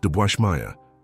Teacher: Second word, debwashmaya. The D is almost inaudible. It's more of a pause than a letter, a micro-interruption of the airflow.